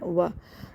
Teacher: کے مخرج سے پڑھتے ہیں، وا پڑھ دیتے ہیں، وا نہیں، واؤ کو ہونٹ کو گول کر کے پڑھنا ہے وا، اور اس کو اک و منہ پڑھ دیتے ہیں، اک